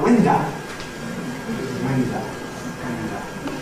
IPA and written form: ˈwɪndə (window)